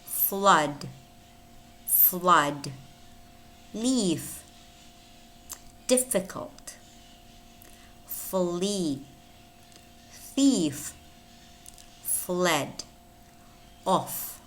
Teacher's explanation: it's a voiceless labiodental fricative normally spelled f as in friend